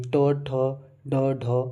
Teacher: जो मूर्धा के अंतर्गत आते हैं वे ट वर्ग में आते हैं। जो बोलते समय जीभ जो है झटके से ऊपर से टकराती है वे ट वर्ग में आते हैं